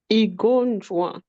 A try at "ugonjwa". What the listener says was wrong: Not E. It's not E.